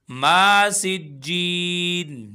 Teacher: मीम को भी हम एक अलिफ के बराबर खींचेंगे, माँ नहीं करना